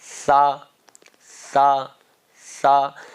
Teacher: زبان کی نوک اوپر والے دانتوں کے کنارے لگائیں. جو زبان کی نوک ہے نا، یہ اس زبان کی نوک کو اوپر والے دانتوں کا کنارہ، یعنی کہ یہ حصہ، یہ تو یہاں پر لگائیے.